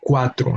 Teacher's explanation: That U and A become part of the same syllable. So it becomes a word with only 2 syllables, no? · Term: diphthongo